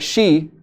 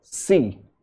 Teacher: they pronounce sha as sa